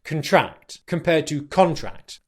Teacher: Okay, so what we need to be aware of here is that we put the stress on the first syllable. When we use the word contract as a noun, it's important that we stress the first syllable because we can also use this word as a verb, but then the stress moves to the second syllable, which would sound like contract compared to contract.